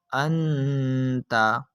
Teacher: تو اس نون ساکن میں اخفا کا قاعدہ لگ رہا ہے۔ نون ساکن کے بعد حرف تا جو کہ حروف اخفا میں سے موجود ہونے کی وجہ سے ہم اس نون ساکن میں گننا کر کر پڑھیں گے